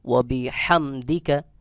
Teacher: হা এটা হলকের মধ্যখান থেকে অর্থাৎ গলার মধ্যখান থেকে একটু চাপ দিয়ে উচ্চারণ করতে হবে